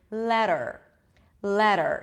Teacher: T actually sounds like Hindi as of the word letter letter so it sounds like a D the tip of the tongue goes up to touch the upper palate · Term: flap T